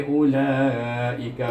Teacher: mad wajib muttasil, baca 4 atau 5 harakat